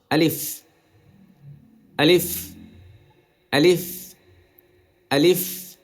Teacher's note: টান নেই এবং পরিষ্কার আওয়াজ